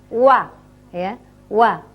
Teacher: Tapi kalau wa ini dua bibir saling mengumpul tetapi tidak saling bertemu. Mecucu, wa, ya, wa.